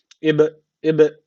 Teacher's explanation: alırsa orada kalkale tecvidi ortaya çıkıyordu Dolayısıyla burada kalkale tecvidi var Ne yapacağız hafif bir dudaktan vurgulayacak neden dudaktan vurguluyoruz Çünkü B harfi dudak harfidir